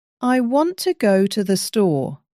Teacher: The important words want and store are stressed while the small words are softer. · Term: stress pattern